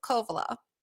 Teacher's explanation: It's just the emphasis of the beginning syllable.